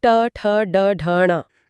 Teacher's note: ट वर्ग उच्चारण स्थान मूर्धा, ट ठ ड ढ ण। इसमें जीभ मुड़कर कठोर तालु को छूती है